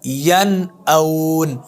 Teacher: अगर ये नून साकिन के बाद आ जाएं तो उस नून साकिन पर गुन्ना नहीं करेंगे, बग़ैर गुन्ने के पढ़ेंगे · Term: इजहार